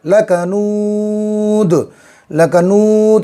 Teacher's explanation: آگے آیت ہے، تو 2 پیش وقف کرنے کی وجہ سے جزم بن جائے گا، لکنود، لکنود، اس کو زیادہ کھینچیں گے، وقف کرنے کی وجہ سے مد عارض ہو گیا، 3 الف کے برابر کھینچیں گے